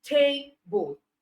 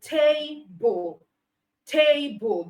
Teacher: like I gave the example for table, the first syllable is stressed